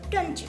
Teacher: This is a merger of alveolar sounds t, d with palatal sound y. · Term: coalescent assimilation